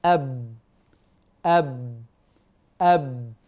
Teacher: من الشفتين مع انطباقهما اللقب شفويه تخرج من الشفتين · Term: الباء